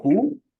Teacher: the oo sound is actually a rounded, close, and back phoneme. What do I mean by that is your lips are round and your jaws are retracted, and also your jaws are lifted and your tongues are retracted.